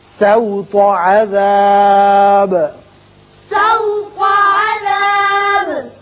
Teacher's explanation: سین باریک ہوگا، تو کو پر پڑھیں گے